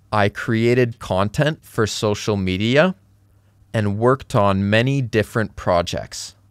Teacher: So, for becomes fur, and becomes n, and we have some linking words here.